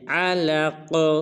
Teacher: قاف کو پر ادا کریں گے اور قاف کو قلقلہ بھی کریں گے